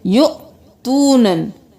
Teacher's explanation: यहाँ पर वाव को नहीं पढ़ेंगे, हमज़ा को झटका देंगे